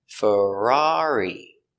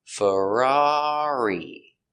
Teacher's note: Stress on the second syllable.